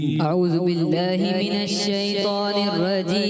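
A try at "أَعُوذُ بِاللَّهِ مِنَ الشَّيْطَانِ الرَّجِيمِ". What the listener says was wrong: اعوذ باللہ میں ذال کی ادائیگی کا کلیئر خیال رکھیں. دوبارہ پڑھیں.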